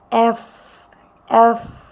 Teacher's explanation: নিচের ঠোঁট উপরের দাঁতে লাগিয়ে এফ, এফ, এভাবে উচ্চারণ করার চেষ্টা করব।